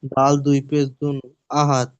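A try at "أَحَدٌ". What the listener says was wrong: আহা দুন আছে, কিন্তু আপনি ওখানে সাগিন করে পড়বেন, কারণ আয়াতের শেষে মানে আয়াত চিহ্ন এসে দেখতে পাচ্ছেন, আর ওখানে থামতেই হবে। আগে আমরা আর বাড়বো না, আর বাড়াও যাবে না, সূরা শেষ। সেই হিসাবে ওখানে দুই পেশকে সাকিন করে দেবে।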